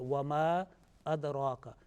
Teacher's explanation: This ma will be prolonged more because of the next word is starting with hamza alif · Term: detached prolongation